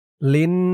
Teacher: লাম দিয়ে এই নুনকে ধরবে, ওয়াজিব গুন্নাহ, হরকতের পরে নুনের উপরে তাসদিদ। লাম নুন জের লিন, নুন আলিফ জবর না, লিন না।